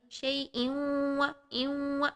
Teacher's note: شیء و یہاں پر ضرور اپنے ناک میں آواز کو لے کر جائیں، ان دونوں آوازوں کو ہمیں مرج کرنا ہے، ادغام کرنا ہے، ٹھیک۔ شیء و یہ جو والی ساؤنڈ ہے، یہ نون کو ہم واو کے اندر داخل کر رہے ہیں اور 2 سیکنڈ کے لیے اس کو ضرور آپ نے یہاں پر غنہ کے ساتھ داخل کرنا ہے۔